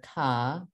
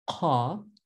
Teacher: on the one hand velar ka, but then uvular ka